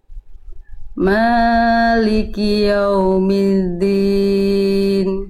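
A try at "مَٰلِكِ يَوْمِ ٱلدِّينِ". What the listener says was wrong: Nah, sekali lagi ma-nya jangan kepanjangan Bunda. Ma-nya 2 harokat. Ya, Bunda tadi kepanjangan. Maliki yaumiddin. Jadi ini kalau kepanjangan jadi kesalahan besar.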